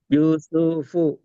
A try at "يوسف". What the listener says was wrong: யூசுஃபு யூசுஃபு அப்படி ஓதலாதே. நீட்ட வேண்டிய மட்டும் தான் நீங்க எல்லாத்தையும் நீட்டீங்க. ஏன் நீட்டுறீங்க பூவை? நீட்டத்தான் வேணும். காரணம் எங்க வா வந்திக்குது? பாக்கு பக்கத்துல. பாக்கு பக்கத்துல வா வந்திக்குது. இங்க வா வந்திக்குது. நீட்டுறது சரி. யூ நீட்டுறது சரி. யூசு ஏன் சு நீட்டுறீங்க? பாக்கு சுக்குன்னு வைக்கிறீங்க.